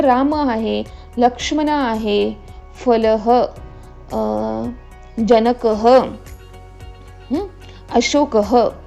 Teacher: ज्याही शब्दांच्या शेवटी विसर्ग लागतो तिथे हचं उच्चारण होतं